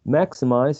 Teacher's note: Maximize has 3 syllables, and the first syllable is stressed.